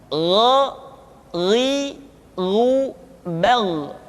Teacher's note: Diucapkan seperti kita mengucapkan huruf kha, yaitu diucapkan dari pangkal tenggorokan kita. Yang membedakannya adalah kha mengalir nafas dan gha tidak mengalir nafas. Dan keduanya memiliki persamaan, yaitu memiliki sifat al-isti'la. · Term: huruf gha